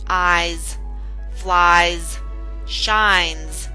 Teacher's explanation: we did have the S substituting the z sound in eyes flies shines at the end of those words